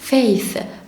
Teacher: تي اتش ما تنساش ان صنطحها بطلع طرطوفة من لساني